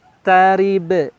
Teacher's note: Endingnya di huruf ba pantulan karena huruf qalqalah. Nah, sebagai contoh silakan disimak.